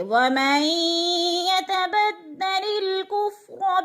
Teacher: من قبل وَمَن يَتَبَدَّلِ الْكُفْرَ، وَمَن پہ ادغام ہو رہا ہے نون ساکن کے بعد یا مشدد، تو نون ساکن کو یا کے ساتھ ملا کر ادغام کریں گے یعنی مدغم کریں گے، ملا کر پڑھیں گے